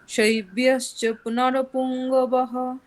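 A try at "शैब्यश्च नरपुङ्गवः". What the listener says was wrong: পুংগবহ, ওটা অকার উচ্চারণ স্পষ্ট হবে। পুংগাবাহ, আপনি বলছেন পুংগবহ, মানে ওকার টাইপের চলে আসছে, সেটা হলে ভুল। শৈব্যশ্চ নরপুঙ্গবহ, বলুন। গিয় হয়ে যাচ্ছে, গিয় হবে না, গবাহ, পুংগবাহ, বলুন আবার।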